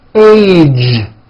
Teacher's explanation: It's not H, it's age with a voiced ending